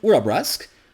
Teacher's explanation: the unvoiced velar stop at the end of urabrusk